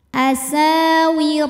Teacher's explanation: hukumnya adalah Mad thobii zohiri sebab ada Alif didahului harakat fathah cara bacanya sa panjang sinnya dua harakat